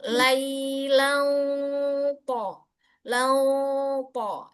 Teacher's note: kenapa harus kita tebalkan, naikkan pangkal lidah untuk menjaga makhraj, mengunci makhraj si to itu